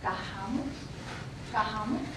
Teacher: Something interesting we have here is called jejeo, where the S at the start of syllable is pronounced kind of like an H